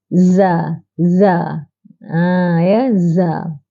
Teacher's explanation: Iaitu di hujung lidah. Hujung lidah ditekankan di belakang gigi kacip bawah. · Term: al-lisan